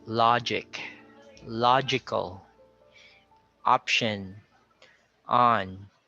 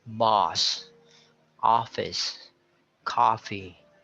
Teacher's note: don't sound it like a total o but it's a combination of an O and an a sound okay so the technique again is to drop your jaw you